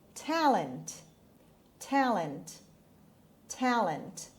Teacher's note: the stress is on the first syllable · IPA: /ˈtælənt/